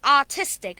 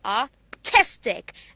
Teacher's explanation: you will give the stress on the previous syllable before tick